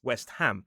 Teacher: actually ham in this word is not a suffix. It's its own word. So we pronounce it as ham, not reduced.